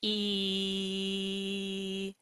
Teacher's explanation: Can you feel your tongue is high and front in your mouth? E. Now contrast that to say the sound ah as in hot.